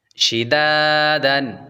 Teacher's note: شین زیر شی، دال الف زبر دا شیدا، دال دو زبر دن شدادن۔ دال کے بعد الف حروف مدہ ہے اس لیے ہلکا سا یعنی ایک الف کے برابر لمبا کر کے پڑھیں گے